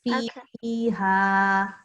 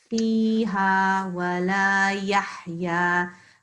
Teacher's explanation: fi has to be elongated because look, there is ya after it.